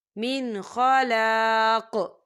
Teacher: فی الآخرۃ من خلاق، یہاں دیکھیے من، یہاں نون ساکن ہے اور نون ساکن کے بعد خا آ رہا ہے، اور خا جو ہے حروف حلقی کا ورڈ ہے، تو یہاں پر اظہار ہوگا، تو ہم اسے بنا غنّے کے پڑھیں گے